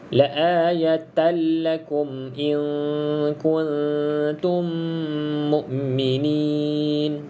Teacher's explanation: Tapi kalau bertemu dengan huruf lam ataupun ra, maka kita baca idgham bila gunnah, masuk tanpa dengung.